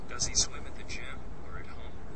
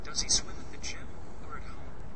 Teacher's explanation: the voice goes up on the first item and down on the second item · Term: either or questions